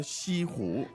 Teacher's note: So the tones are First and second.